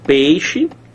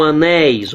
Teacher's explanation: O ditongo que você tem aqui em peixe é o mesmo ditongo que você tem aqui em anéis. Só que peixe, o som é fechado, ó. Anéis, esse som é o que? Esse som é aberto.